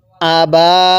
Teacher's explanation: আবা হামজা এর মধ্যে কিন্তু টান দিব না